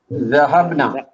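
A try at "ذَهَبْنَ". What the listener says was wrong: ذہبنا نون پہ ایک حرکت کے ساتھ. نا نہیں کرنا, ذہبنا نون پہ ایک حرکت کے ساتھ, بہت اہم ہے.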